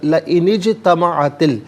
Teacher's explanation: جیم ساکن ہے لیکن یہ حرف قلقلہ ہے، تو یہاں آواز لوٹتی ہوئی محسوس ہونی چاہیے